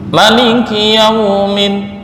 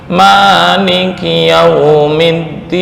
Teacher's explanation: perbedaannya di Maliki Maliki menurut Imam Hamzah dibaca pendek